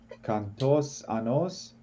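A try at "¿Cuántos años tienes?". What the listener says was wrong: Oh, so here we have two sounds. Okay, it's not only ku, it's only wa. Okay, pronounce this u. Pronounce it, please, and then a. And then join them in only one sound. Wa, wa, wa, wa, and then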